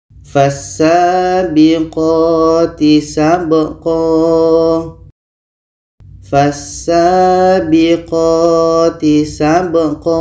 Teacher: Kita panjangkan dua harakat kalau tanwin atas. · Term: mad iwad